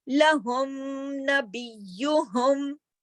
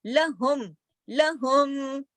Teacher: میم جو ہے وہ اپنے پورے ذاتی صفت یعنی غنے کے ساتھ اور اپنے مخرج سے پوری طرح ادا ہوگا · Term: اظہار شفوی